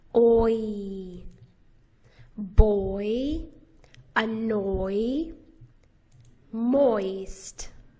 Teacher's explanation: This is a diphthong vowel. It has two sounds in it, o and e, put together. Oi. You glide from the first sound to the second sound.